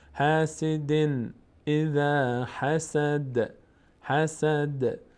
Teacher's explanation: قلقله میشه از اون پنج حرف هست قاف تا با جیم دال وقتی ساکن باشن روشون توقف بکنیم مقداری در مخرج می‌لرزد